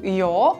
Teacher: Dabei wird der a laut weiter hinten im Mund und auch von der Zungenhöhe her höher gebildet. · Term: A-Verdunkelung